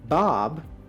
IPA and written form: bɑb (Bob)